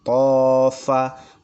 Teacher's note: fa ini dua gigi seri atas bertemu dengan bibir bagian dalam. Tofa, ada hembusan f.